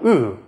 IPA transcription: ɯ